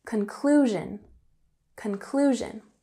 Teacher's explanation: So in conclusion, with emphasis on the second syllable